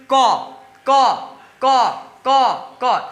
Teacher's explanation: स्वर तंत्रिका के कंपन से वर्ण का निर्माण यह नहीं हो रहा है। तो ये मेरा क्या हो जाएगा, अघोष वर्ण हो जाएगा।